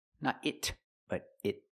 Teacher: Use a stop T. Not it, but it. Stop the air.